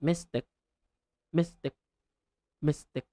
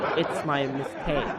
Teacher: I capitalize the second syllable, take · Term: stress